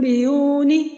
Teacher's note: نون ساکن کے بعد با آ رہا ہے تو وہاں پہ نون ساکن اور نون تنوین کو ہم میم سے بدل کر غنہ اور اخفا کے ساتھ ادا کریں گے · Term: اقلاب